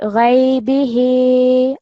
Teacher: Only thing is, because we're looking at mad saghir, at least 3 seconds. So on the ha should be ghaybihi, a little bit longer on the ha, okay?